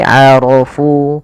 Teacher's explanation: Aro rya tebal bukan arofu tapi arofu. Karena dia ro berharakat fathah maka dia tebal.